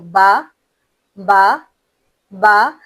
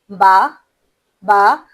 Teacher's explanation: با دونوں ہونٹوں کو مکمل طور پر بند کر کے ادا کیا جاتا ہے · दोनों होठ मुकम्मल मिलकर फिर जब खुल जाएं तब हमारा हर्फ बा अदा होता है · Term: حرف با